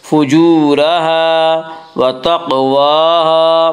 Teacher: فُجُورَهَا الف مدہ الف ہمیشہ مدہ ہوتا ہے، الف سے پہلے ہمیشہ زبر ہوتا ہے، الف مدہ کو ایک الف کے برابر کھینچ کر پڑھیں گے۔ فُجُورَهَا وَتَقْوَاهَا قاف میں قلقلہ ہوگا، قاف حروف قلقلہ میں حروف قلقلہ 5 جن کا مجموعہ قطب جد ہے، یعنی قاف طا با جیم دال۔